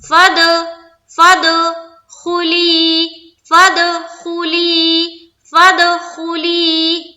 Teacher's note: فا کو دال سے ملا رہے ہیں اور ملاتے ہوئے کر رہے ہیں قلقلہ. دال حروف قلقلہ میں سے ہے، ٹھیک ہے، تو اس میں قلقلہ کرنا ہے.